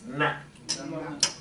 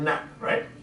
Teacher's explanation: What is the tip of our tongue when we say na? It's in the hard palate, right? We hit the hard palate, right?